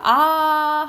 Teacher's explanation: 그래서 우리가 아 하면 계속 아야. 그래서 입술 모양이나 혀의 위치가 달라지지 않아요. 그래서 단모음이고